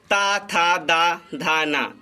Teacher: इनका उच्चारण स्थान दंत